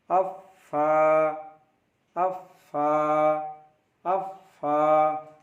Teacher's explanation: फा ऊपर के दांतों के किनारे और निचले होंठ के तर यानी गीला नम हिस्से यानी भाग से उच्चारण होता है. फा is pronounced from the एज of the upper front teeth.